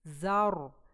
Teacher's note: और आगे फिर हमारा ज़ा फतहा के साथ है ज़र, और आगे रॉ आ रहा है और रॉ साकिन है, इसलिए हम वहाँ पे उसकी सिफा सारी प्रोमिनेंट करेंगे। ज़र, और रॉ यहाँ मोटा पड़ा जाएगा क्योंकि रॉ साकिन है